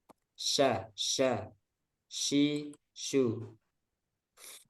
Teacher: tersebarnya udara pada seluruh mulut ketika mengucapkan huruf tersebut dari makhrajnya nya Nah sifat tafasyi ini hanya dimiliki satu huruf saja yaitu